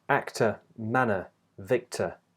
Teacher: the R at the end is not pronounced. Instead, the OR spelling represents one sound, which is a single schwa vowel sound